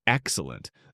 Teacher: The word is stretched. The syllables are given room to develop. The first syllable arrives with a slight rise. The second settles with the satisfaction of something placed on a shelf exactly where it belongs.